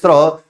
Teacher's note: स्र जब बोलते तो उसमें आधा श और र दोनों का उच्चारण स्थान आता है